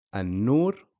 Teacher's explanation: has a shadda then you know it's a sun letter so you skip the pronunciation of the Lamb